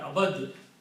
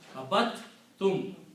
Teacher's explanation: when dal and tha come together, letter dal and letter tha comes together, then instead of pronouncing dal, you pronounce ta 2 times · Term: rule of tajweed